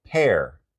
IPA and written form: pɛr (PEAR)